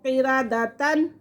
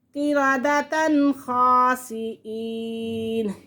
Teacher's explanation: یہاں پہ ہم غنہ نہیں کریں گے کیونکہ تنوین کے فوراً بعد حروف حلقی میں سے خا آ رہا ہے، تو یہاں پہ اظہار حلقی ہوگا